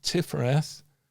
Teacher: And we interesting enough pronounce that tifereth because it's a hard T at the beginning and a soft th at the end